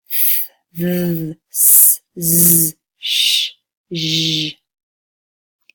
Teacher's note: The next line will be all of your fricative, or the continuous sounds. So you can hold these sounds out.